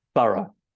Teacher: in British English this 'o-u-g-h' makes an ə sound. so that is a 'schwa'